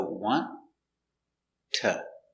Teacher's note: So, why do we pronounce want to like wanna? Well, when you have a T and T together, the T is silent.